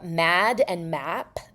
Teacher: Um you also get uh what we call the short a split. So uh mad and map don't have the same vowel for traditional New Yorkers